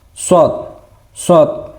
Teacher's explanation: pengucapan huruf shad ini seperti kita sedang ee mau bersiul. Jadi, shad shad bibirnya agak ke depan.